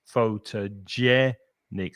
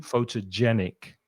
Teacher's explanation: stressing the third syllable there